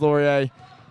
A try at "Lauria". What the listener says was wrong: it is pronounced Laurie uh Lauria not Laurie